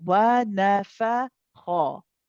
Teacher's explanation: So we have wow light, noon light, fa light, but the ha is heavy. Okay, so that's the only letter here so far that we've had that is heavy.